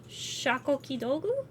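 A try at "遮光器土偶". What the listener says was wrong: No, you said Shakwikodu. Yeah, you said Shakwikodu.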